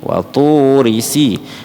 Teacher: Tu-nya panjang, ri-nya tidak panjang. Jadi bukan waturi sini atau seperti itu.